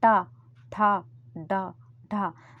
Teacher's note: जीभ का सबसे बाहरी हिस्सा ऊपर जाके तालु में अगर टच होता है तो वो मूर्धन्य कहलाते